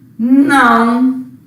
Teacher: O A é vogal, o O semivogal. Então, ele é um ditongo nasal. E se eu fosse classificar aqui, decrescente.